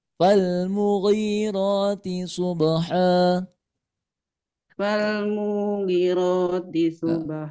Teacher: Nah, yang dipanjangin huruf ghainnya Bu, ghain.